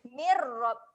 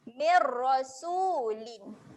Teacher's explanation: Saya tulis huruf A Bacaan asimilasi ni kita kena gabungkan terus. Bunyi huruf mim baris bawah tu gabungkan pada huruf ra terus.